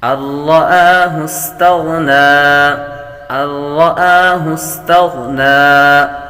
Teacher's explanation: غین حروف مستعلیہ میں سے ہے، پر کریں گے